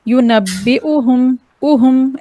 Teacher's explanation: ऊ नहीं कहना है, क्योंकि यहाँ पर मद नहीं देना। मद मतलब होता है खींचना, ऊ हमने खींच दिया।